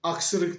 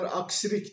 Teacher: Örneğin aksırık diyemekler, aksirik derler. Çünkü onlarda ı sesi yok. I sesi olmadığı için ona en yakın ses olarak i sesini çıkarırlar.